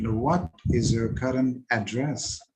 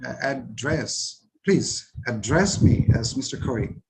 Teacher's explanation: So here, address used as verb, and we have to put the stress on dress.